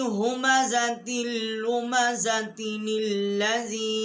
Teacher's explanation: اس کو تل لذی نہیں پڑھیں گے، نل لذی ہم پڑھیں گے